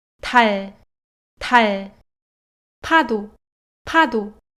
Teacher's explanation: Aspirada no começo, vozeada no meio. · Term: série laxa